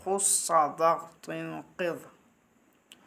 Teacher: مطلب اس صفت کا یہ ہے کہ ان حرفوں کو ادا کرتے وقت زبان کی جڑ اوپر تالو کی طرف اٹھ جاتی ہیں، جس کی وجہ سے یہ حروف موٹے اور پر پڑے جاتے ہیں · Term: حروف مستعلیہ